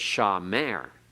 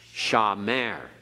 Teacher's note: So a word like shamer, we accent on the last syllable. It's not accented on the first. It's not shamer, it's shamer.